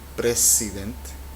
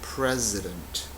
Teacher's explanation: Esta S en el centro de presidente, pues en inglés suena como president. Es el sonido de Z, que en español simplemente no existe.